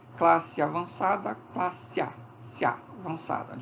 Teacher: uma das vogais se torna semivogal ela passa a se apoiar ela passa a funcionar como margem